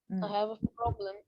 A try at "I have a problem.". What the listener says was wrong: problem. stress كمان I have a problem.